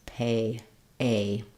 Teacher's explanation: it's a little bit more open than the e not as open as the a but it Glides and closes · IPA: eɪ